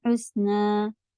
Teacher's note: حسنا میں ہا ہے، سین میں سیٹی کی آواز رہتی ہے